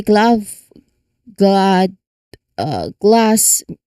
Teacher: From that voiced G, your tongue moves quickly to the L position like glass. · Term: gl sound